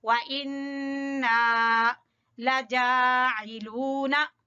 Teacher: नून मुशद्दद का गुन्ना और फिर अलिफ मद्दा